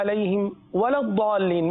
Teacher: ولا ضاد کو پر پڑھیں گے